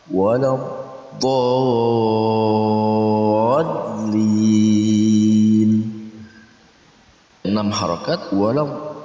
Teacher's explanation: karena huruf mad bertemu dengan huruf tasydid dalam satu kata, maka cara membacanya panjang 6 harakat. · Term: mad lazim kilmi musaqqal